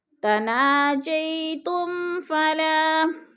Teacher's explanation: میم ساکن کے بعد فا آ گیا ہے تو اظہار شفوی ہے، ادھر غنہ نہیں کریں گے، لفظ کو ظاہر کر کے پڑھیں گے۔